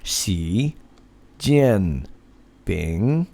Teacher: you'll notice that it goes up, down, and up, as Chinese is a tonal language